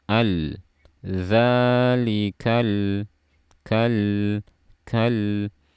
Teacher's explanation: Berikutnya ada lam sukun, sifatnya bainiyah atau tawassut. Dialirkan suara sedikit.